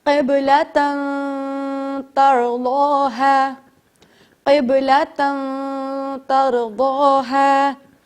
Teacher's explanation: اس کے پیچھے جو نون ہوگی آپ اسے چھپا کے پڑھیں گے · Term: اخفا